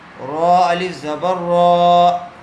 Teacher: را کو پر کیجیے